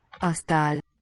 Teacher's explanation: It sounds like the A is long, but it's not written so.